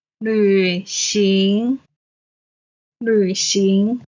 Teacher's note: 旅 is the third tone. 行 is the second tone.